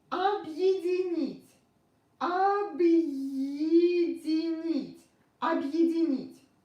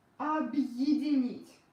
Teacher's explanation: when I pronounce it really fast, ye becomes yi.